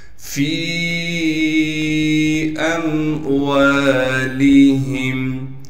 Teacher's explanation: فا کو یا مدہ سے ملا دیں گے، اس لیے کہ یا مدہ ساکن ہے اور یا مدہ پر مد ہونے کی وجہ سے فا کو 3 الف کے مقدار کھینچیں گے